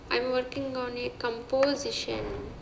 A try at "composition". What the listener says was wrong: But it's composition. Stress on the third syllable, not the second.